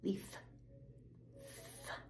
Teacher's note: Leaf, f, just air, no voice.